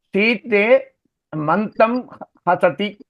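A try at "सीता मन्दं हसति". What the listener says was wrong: சீதேவா சீதாவா? சீதா மந்தம் ஹசதி.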